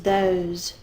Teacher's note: sometimes the voicing continues over to the S so it makes it Z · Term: z sound